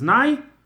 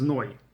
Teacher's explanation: So Sephardim ended as Nai, Ashkenazim ended as Noi.